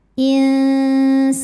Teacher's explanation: Karena nun sukun menghadapi huruf sin. Cara membacanya, nun sukun dibunyikan samar-samar, siap-siap menuju makhraj huruf sin disertai dengungan. Ujung lidah kita sudah menyentuh makhraj huruf sin yaitu dinding gigi sari bawah, tapi tidak menekan. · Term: ikhfa hakiki awsat